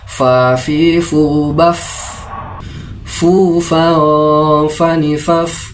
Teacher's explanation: Huruf fa makhrajul hurufnya ada pada bagian dalam bibir bawah bersama ujung gigi seri bagian atas dengan disertai suara nafas.